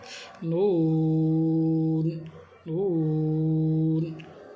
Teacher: ہے، کاف، کاف، لام، لام، میم، میم، نون، نون کو پڑھتے وقت خوب خیال رکھنا ہے کہ ناک کے اندر آواز نہ جائے ، ہونٹ کو گول کر کے منہ سے ادا کرنا ہے،